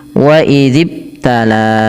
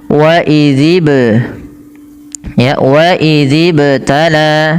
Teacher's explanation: ini tidak dibaca waid ubtala ya, tapi dibaca langsung ke bnya dan sembari dipantulkan huruf bnya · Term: bacaan qalqalah